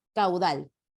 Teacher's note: en la palabra caudal la vocal abierta es la que suena más porque es un caso de diptongo